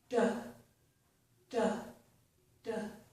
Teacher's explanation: These are formed with the tongue tip, okay, the tip of the tongue, at the upper gum ridge, so behind my upper front teeth, okay?